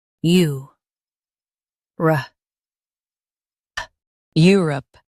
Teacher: Stress you and keep rup smooth.